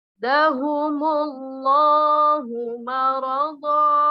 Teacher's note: Mad iwad. Jadi tanwinnya lebur menjadi huruf mad. Ini dinamakan mad iwad dikarenakan waqaf.